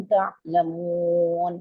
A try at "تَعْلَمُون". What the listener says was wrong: थोड़ा सा आइन को वाजे करिए। आपका हमजा की तरह लगता है। तअलमून।